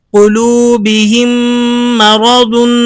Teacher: فی قلوبہم مرض، ایسے نہیں آپ پڑھیں گے فی قلوبہم مرض، اس میم کو الگ پڑھیں اور اگلے میم کو الگ سے پڑھیں، ایسا نہیں ہے۔ مشدد میم کے اندر آپ نے اس ساکن میم کا ادغام کر دینا ہے۔ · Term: ادغام شفوی